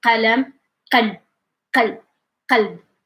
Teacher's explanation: pulling your tongue back, like swallowing it till the air is blocking, and then saying the q. Also try to say it's like these sounds is coming even like from your stomach down, like you can feel it. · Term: qah sound